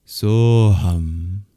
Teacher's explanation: And if you're curious why saha and aham join to make the sound soham, it's due to grammatical rules called sandhi, that the visarga at the end of saha and the akara at the beginning of aham, they form the okara. So when the words are joined together as one, it's soham, that I am.